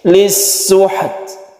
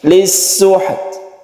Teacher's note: Ketika kita membaca sukun, dua sukun yang berdampingan, yang satunya adalah sukun ta, maka tetaplah dia itu mempunyai sifat hamas, yaitu ketika sukun kita menghembuskan nafas sedikit sehingga muncullah sehuruf sedikit s gitu ya di belakangnya, tapi itu sedikit saja yang timbul secara otomatis ketika kita mensukukan ta dan menghembuskan nafas.